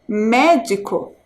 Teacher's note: A sílaba mais forte, médico, é o me.